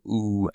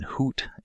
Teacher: the high back vowel oo as in hoot